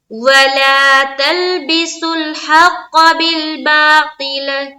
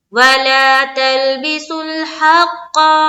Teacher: काफ के ऊपर तो जबर है, तो जबर को ही अदा करनी है। काफ के साथ अलीफ तो है नहीं जो हम लंबा करें